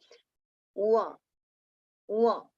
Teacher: when the anunasik va is pronounced, we just have to make a pout.